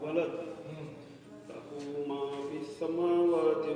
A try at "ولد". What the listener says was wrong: ملا تو نہیں جہاں میم لکھا رہتا ہے نا وہاں لازمن آپ کو سانس توڑنا ہے اور اگلے والے سے نہیں ملانے نے معنی غلط ہوا ہے اس کا اس کی مثال پیچھے دیا ہے اسے کسی